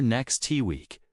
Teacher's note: Instead of saying next week with a hard stop, you'll hear next T week, where the T almost disappears